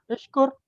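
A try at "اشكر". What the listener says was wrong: बिल्कुल ठीक है, सामने देखे ना आपके सामने उनसुर लिखा हुआ है, तो कैसे होगा? उश्कुर, बिल्कुल ठीक है।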